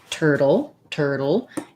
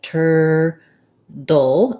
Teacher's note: they turn this t into a flap so it's more like a d so it sounds like tur dull